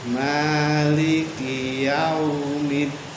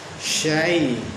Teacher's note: Yau itu mad lin, karena mad lin itu kata-kata yang terputar, seperti dari fathah ketemu wawu jadi yau, atau dari fathah ketemu kasroh yai, syai.